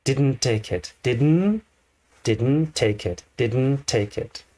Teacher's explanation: instead of using two t sounds this kind of connects and has one t sound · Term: one connecting sound